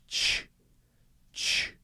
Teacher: it and stopping it again immediately so it goes shhh so I'm blocking the air first by moving my tongue up and putting it against what's called the hard palate at the top of my mouth then I'm releasing that but as soon as I release it